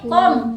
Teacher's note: Kom itu pangkal lidah nggak naik.